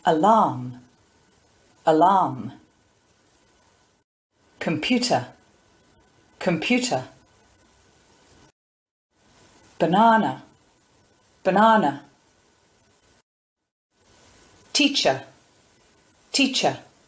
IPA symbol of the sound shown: ə